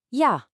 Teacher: the letter J in German is always a Y sound, like in yes, so the word for yes is ja.